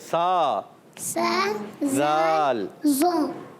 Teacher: زبان کا سرا اور اوپر کے دونوں دانتوں کے اندرونی کنارے سے ذال ادا ہوتا ہے